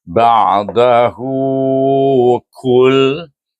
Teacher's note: Bila wasal titik dua tu nota dua wasal iaitu kita akan baca dengan mad silah qasirah dengan dua harakat dengan mad pada ha damir tu